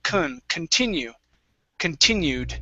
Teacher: the beginning of the word does not receive the stress we say kun continue continued try that continued good good nice